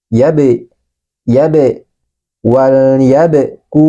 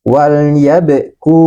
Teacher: Ini huruf ba dalam keadaan sukun atau mati, sehingga dia harus kita pantulkan. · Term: dipantulkan